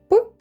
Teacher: Голосові зв'язки не вібрують, адже він глухий. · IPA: [п]